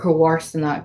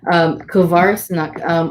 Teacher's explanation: And so I'll put here kovarsanacht or kowarsanak, depending on the dialect. So that MH could be a W or a V, depending on the dialect